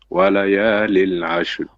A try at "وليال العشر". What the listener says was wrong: Walayalin. Tanween, not lil. Walayalin ashr.